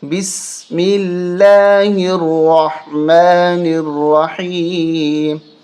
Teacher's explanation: را کو موٹا کریں گے، حا کو حلق سے نکالیں گے، اور اس را کے اوپر تشدید ہے تو سختی کے ساتھ موٹا کریں گے، اور حا کو حلق سے نکالیں گے۔